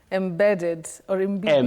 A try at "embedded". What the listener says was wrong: Embedded, no. Avoid that. Embedded, common but wrong. The first E takes that sound E, the short sound E. Im. You don't say eh. Im. Embedded, embedded, not embedded. Just like you say embezzle, to embezzle funds, not to embezzle that we commonly hear around us.